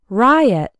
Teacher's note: Riot has two syllables and the stress is on the first one